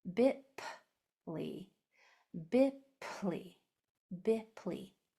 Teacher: So when you pronounce the sound of your P, make sure it's only air. No vocal cords are allowed to be used. Okay, no voice comes out at all on a P. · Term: P sound